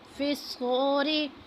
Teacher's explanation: صاد کو موٹا کر کے پڑھنا ہے